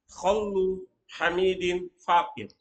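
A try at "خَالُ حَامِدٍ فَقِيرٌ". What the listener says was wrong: Khaw, mana khaw? Enggak tasdid, enggak khallu. Beda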